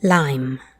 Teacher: the tip of the tongue touches behind the top teeth and then comes down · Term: light l